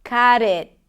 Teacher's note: Look, the first word is cut, but then you connect it to it. The T of the cut becomes the beginning of the next word, but it's also between 2 vowels, so it becomes a flap T